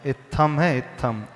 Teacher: इत्थम नहीं है, दीर्घ इकार नहीं है, ह्रस्व इकार है।